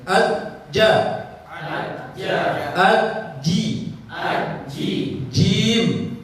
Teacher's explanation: Kalau jim itu kuat, syiddah sifatnya. Tekan jim itu kuat ke langit.